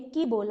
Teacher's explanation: ककार की वहां आधी मात्रा है और इकार की 1 मात्रा है, तो 1.5 मात्रा वाला हमने उच्चारण किया की